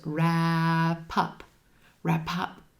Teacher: That final P at the end of wrap links over, joins in front of the word up, and becomes pup